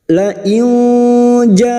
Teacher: bertemunya Mad dengan Hamzah dalam satu kalimat mad wajib muttasil lima harakat kita panjangkan